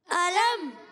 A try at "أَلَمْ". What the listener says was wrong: علم. حمزہ کو خوب واضح کریں گے. علم.